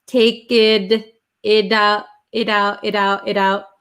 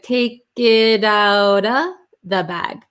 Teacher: usually when T's are sandwiched between vowels they become a flap T. So it sounds like a D.